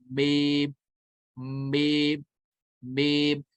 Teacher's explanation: बेम जो अदा होता है वो दोनों होंठ के खुश्क हिस्से से अदा होता है, यानी दोनों होंठ मिलते हैं, खुश्क हिस्से मिलते हैं।